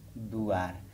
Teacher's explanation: शब्द के मध्य में या ध्वनि या में बदल गई और वा ध्वनि उआ में बदल गई